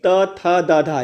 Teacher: जो हमारी जीभ है वह जो है दांत को स्पर्श करती है, इसीलिए इसको दंत कहा गया है।